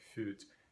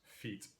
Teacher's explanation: In English, the formerly rounded front vowel there, something like fut, has unrounded and just given us feet in English today. But it's a front-back vowel relationship.